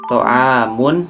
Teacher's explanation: Nah, di sini ada ijhar syafawi juga karena sebab huruf mim berharakat domah tanwin bertemu dengan huruf hamzah, dibaca jelas tidak berdengung sama sekali.